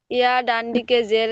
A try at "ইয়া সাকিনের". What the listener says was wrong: ডান দিকে না, ইয়ার ডান দিকে না, এখানে ইয়ার উপর সাকিন এসেছে, এই সাকিনটি বলতে হবে।